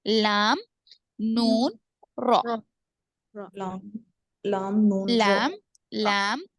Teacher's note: जुबान की नोक ऊपर के तालू को लगने से अदा होते हैं